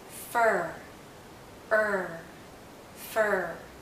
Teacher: for her the tip of our tongue is actually curled backward and as it curls back the central part of our tongue goes up · our mouth is very closed and our tongue is generally in a high position